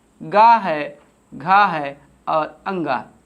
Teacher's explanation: का वर्ग का उच्चारण स्थान जो होता है वो आपका होता है कंठ होता है